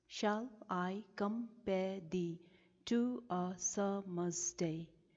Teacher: the syllables are arranged in a sequence of unstressed syllables being followed by a stressed syllable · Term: iambic pentameter